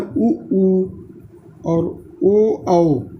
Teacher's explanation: वृत्तमुखी स्वर मतलब ऐसे स्वर जिनको बोलते समय आपका मुख गोले के आकार में बन जाता है, उससे हम लोग बोलते हैं उ और ओ, औ।